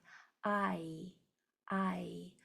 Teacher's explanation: It's a diphthong, so your mouth changes shape from the beginning of that sound to the end of it.